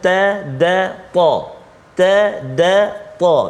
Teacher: Makhraj yang sama, tiga huruf itu ia keluar hujung lidah